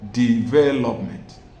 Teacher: in the word development, the stress is on the second syllable